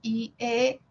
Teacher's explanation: las anteriores son i e las posteriores u o y la central la a